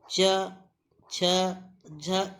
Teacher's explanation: च, छ, झ एक ही प्रकार का इसका उच्चारण हो रहा है और आपके मुंह के भीतर जो ऊपरी छत है उसके पिछले वाले भाग से ही इसका उच्चारण हम लोग कर रहे हैं। ठीक, तो ये तीनों आपके तालव्य ध्वनि है।